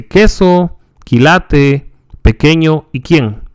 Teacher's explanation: The Q is always followed by U as in English, except for a few foreign words such as Iraq Although this word can also be spelled Iraq, since the sound of the Q is essentially identical to that of K. Like the P and K sounds, the Q is not aspirated.